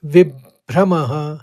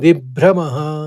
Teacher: पहले ब का आघात लिया और फिर भ्र से भ्रम कहा